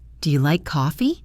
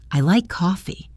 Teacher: Now the statement, let your voice gently fall.